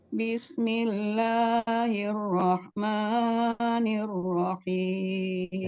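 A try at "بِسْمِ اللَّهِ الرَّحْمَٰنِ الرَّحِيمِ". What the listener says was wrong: Nah, basmalahnya kepanjangan Bu, yang Bismillahi cukup 2 rakaat. Ar-Rahmani juga 2 rakaat. Dengan Bismillahi Ar-Rahmani. Nah itu sudah lebih dari 2 rakaat. Iya, kurangi sedikit lagi aja Bu.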